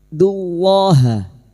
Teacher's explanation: lam jalalah yang didahului dumah kita baca tafkim